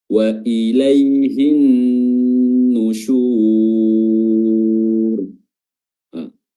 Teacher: di sini ada ya sukun yang didahului oleh fathah ya di situ ada sifat Lin